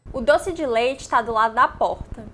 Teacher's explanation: a letra E se transforma em I para todos, menos para o Rio Grande do Sul, nas palavras doce de leite. Para essas três palavras, em todos os outros estados, esse E do final ele vai ser pronunciado como I, porque o E no final, quando ele é átono, ele é pronunciado como I. · você vai notar que a letra O é pronunciada como U nas palavras do e lado